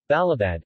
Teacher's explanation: d, voiced alveolar plosive, syllable initial and final